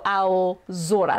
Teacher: the hard voiced version of the s consonant is z